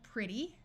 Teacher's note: This E will have a short I sound.